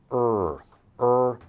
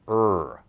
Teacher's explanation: you can think of extending the jaw also so not R if you can roll your tongue you can feel that your tongue touches the top of your mouth we don't do that with the letter R